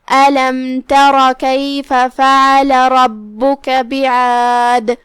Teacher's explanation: ہم میم کو ظاہر کریں گے اور یہ حکم کو بغیر غنہ سے ادا کریں گے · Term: اظہار شفوی